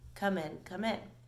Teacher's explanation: it sort of establishes a heavier emphasis on the second syllable